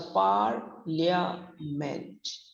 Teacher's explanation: So parliament is a word when we often see in writing, but be careful with the pronunciation. The first syllable par is long stressed, rhyming with card, but the other two syllables have the weak vowel. So the pronunciation is parliament. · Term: first syllable stressed